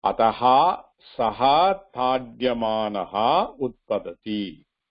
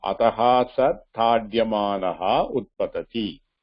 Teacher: If I read fast, I need not pronounce the Visarga.